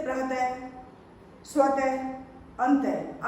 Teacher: विसर्ग में इसमें ह का ही उच्चारण होता है, जैसे प्रतः, स्वतः, अंतः।